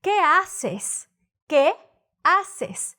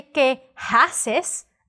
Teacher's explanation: the H in Spanish doesn't have a sound so you don't say que haces you're going to say okay